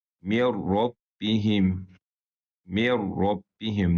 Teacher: Nun oxunmur. Sıra ra hərfini keçirik və günnəsiz idğam olaraq oxuyuruq.